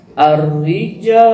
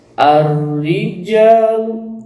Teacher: ja dibaca panjang dua harkat atau dua ketukan hati-hati tidak boleh lebih dari dua harkat